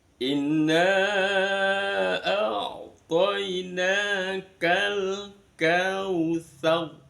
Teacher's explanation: Kalau ada ro sukun, ini karena diwakofkan, berarti roknya harus dibaca sukun. Sebelum ro sukun ada huruf berharokat fathah, maka roknya wajib dibaca tafkhim, tebal.